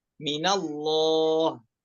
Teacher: Kemudian an-nun minal al-jarah, yaitu nunnya setelah ada huruf yang kasroh sebelumnya, naftahuha, nunnya bukan dibaca kasroh namun dibaca fathah, minallah, seperti itu.